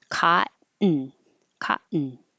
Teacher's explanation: it's a good example of a syllabic n and it's a common word